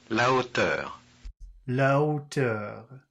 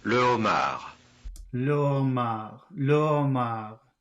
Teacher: I don't really actually hear an H.